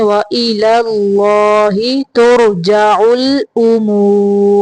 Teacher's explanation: پہلا لام باریک پڑھیں گے، اللہ کا لام موٹا پڑھیں گے